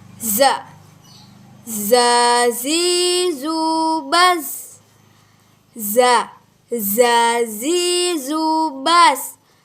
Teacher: Melafalkan huruf za itu ujung lisan kita itu hampir menyentuh gigi seri bagian bawah dan diiringi dengan suara, namun tanpa diiringi dengan udara gitu. Kayak suara khasnya tuh mirip dengan suara tawon.